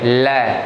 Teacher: जब हम ल का उच्चारण करते हैं तो बीच में से जीभ टच हो जाती है और दोनों तरफ से जो श्वास है वो दोनों तरफ से निकलती है, ल। तो इसी वजह से इसको पार्श्विक ध्वनि कहा गया है।